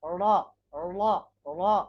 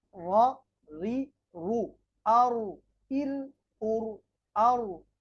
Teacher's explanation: জিহ্বার আগা, এই যে এখানে সুন্দরভাবে চিত্রটি দেওয়া আছে, জিহ্বার আগার উল্টা সাইডকে বলে পিঠ। জিহ্বার আগার পিঠ বরাবর উপরে তালুর সঙ্গে লাগিয়ে র